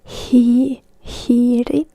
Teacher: there is the H that is always pronounced in Finnish